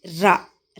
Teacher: నాలుక దంత మూలాన్ని తాడనం చేయుటచే పుట్టే ధ్వని. కరణమైన జిహ్వాగ్రం పైనున్న స్థానాన్ని తాకి వెంటనే క్రిందికి పడిపోయినచో పుట్టేవే తాడితం. ఒక్కటే అది రా అక్షరం.